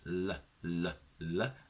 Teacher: They are laterals, meaning that this different direction in which the air is sent is the sides of the tongue. They are voiced, meaning that there is vibration in the vocal cords, which you can test by placing your hand on your throat and then saying the sound L, L, L, and you will feel vibration here. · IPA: /l/